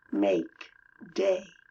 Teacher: make day is /ei/ it is two sounds really